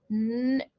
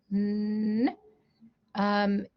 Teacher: the tip of your tongue is touching the ridge at the back of your teeth. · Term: n sound